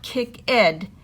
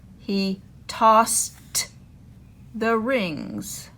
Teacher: It is toss, and then we have the ED. It doesn't make ed, it makes t. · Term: T sound